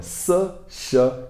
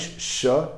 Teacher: Então é sa, sh. A língua ela vai indo da frente, sa, para trás, sh, para bem para trás, sh.